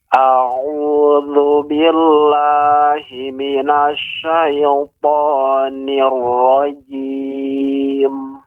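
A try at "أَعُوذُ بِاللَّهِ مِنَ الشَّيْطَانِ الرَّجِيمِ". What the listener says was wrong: Ya-nya tidak boleh digoyang Pak, lidah. Didudukkan dan dialirkan.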